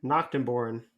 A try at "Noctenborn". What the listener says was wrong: Not knock. Knack. Like you're gonna have a snack.